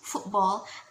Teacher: So the t sound sometimes is dropped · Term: glottalization